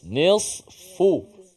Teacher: Sad dan fa huruf yang hamas. Suaranya nafasnya terkeluar daripada makhraj.